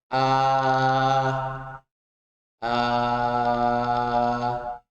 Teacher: Saat alif fathah ini kita mengucapkan dengan mulut yang terbuka yang jelas. Bukan o atau e.